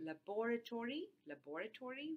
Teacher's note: with like your stress on the second syllable, and therefore you get five syllables instead of four. But very often in rapid speech, you actually delete the vowel between the b and the r, and then you get only four syllables in this particular word.